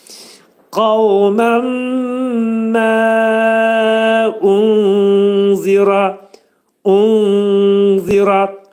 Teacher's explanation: pəltək zəni dilimizi iki dişin arasına gətirib nun hərfini onda gizlədirik